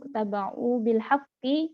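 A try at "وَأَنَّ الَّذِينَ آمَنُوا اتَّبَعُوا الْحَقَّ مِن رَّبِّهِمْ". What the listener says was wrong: Enggak pakai bil. Jadi langsung gini.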